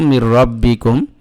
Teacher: নুন সাকিনের পরে রা আসছে, ইদগামে বেলা গুন্না হয়েছে, গুন্না করা যাবে না, তবে এই নুনটাকে রার সাথে মিলাই ফেলবো